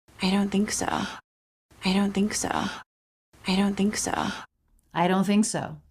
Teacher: a really really really Light release of the K I think as it transitions down into the s for so · here we're dropping the T sound all together I don't think the N is linking right into that unvoiced th don't think there's no stop there's no separation there's no T